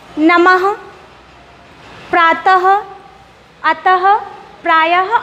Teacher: जब मैं इन वर्णों को बोल रही हूँ तो लास्ट में हमें हा ध्वनि सुनाई पड़ रही है। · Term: विसर्ग